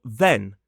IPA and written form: ðen (then)